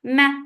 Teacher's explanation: Yeah, 2 counts long and make it soft. Ma for fatha open jaws, the sound is short